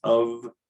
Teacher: people sometimes get tripped up on is of which is always even though it's spelled with the voiceless letter it's transcribed and pronounced with the voiced sound